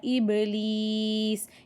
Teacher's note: இபிலீஸில் பா சுக்கூன் கல்கலா அசைச்சு ஓதணும்.